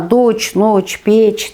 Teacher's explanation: Енді мына дочь, ночь, печь дегенде, помощь дегенде, бұл дыбыстар өзі де жіңішке айтылады